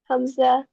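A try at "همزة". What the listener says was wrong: हमजा एंड में इसकी ह का साउंड लेकर आना है।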